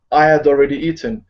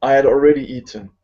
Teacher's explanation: the H becomes like a Y, like a light Y.